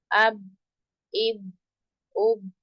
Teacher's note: दोनों होंठों की अंदरूनी यानी जो अंदर वाला वेट पार्ट है वो मिल जाए तो अदा होगा बा